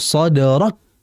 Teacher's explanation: Tertahan atau seperti ada tabrakan gitu loh. Di ujung sadrak. Baru dilepas hamasnya. Ini sering terjadi antara kita, sehingga perhatikan itu, karena kalau kita langsung sadarak, otomatis sifat syiddahnya nanti hilang.